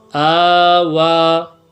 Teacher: حمزہ کڑا زبر آ، واو کڑا زبر وا، آوا، وقفا آوا. جو ہے کڑی حرکات وقف کی حالت میں بھی ایک الف کے بقدر کھینچ کر ہی پڑھا جاتا ہے. وقف کی حالت میں جو ہے اس کی لمبائی کو کم نہیں کریں گے، اتنا ہی ایک الف کے بقدر کھینچ کر ہی پڑھا جائے گا.